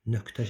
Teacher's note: Amma nöqtə sözündə t kar samit gəldiyinə görə q tələffüz olunacaq.